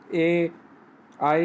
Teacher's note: ए आई का उच्चारण कंठ तालु से हो जाता है, इन्हें कंठ तालव्य भी कहा जाता है।